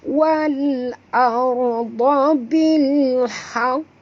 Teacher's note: Tiwal awal alif lam qamariyah, bunyikan lam yang mati ini dengan jelas tanpa lantunan.